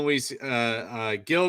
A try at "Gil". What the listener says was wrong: Heel. Heel. It's Not hard, like your foot. Stick it in your mouth.